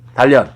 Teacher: 니은이 리을 앞에서 리을로 바뀜. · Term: 유음화